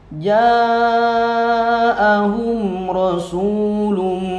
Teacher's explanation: lum idgham bi gunnah, dimasukkan ke mim, lum dengan memakai gunnah, masuk hidung